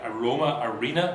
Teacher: which have penultimate stress, that is, they get stressed on the last but one syllable, counting from the last, from the end of the word